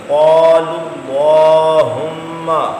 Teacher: اللہ کے لام سے پہلے لو پر پیش آ گیا، اللہم کے لام کو پر پڑھ دیں